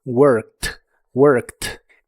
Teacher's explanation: La e d del final de esta palabra se pronuncian como t.